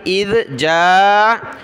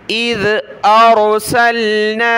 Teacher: زبان نکالیں گے ذال پر